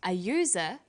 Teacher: where the vowel U is pronounced y, we use a. So we say an umbrella, but a user, because user sounds like it begins with a Y.